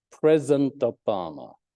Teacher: actually this president has two syllables, not three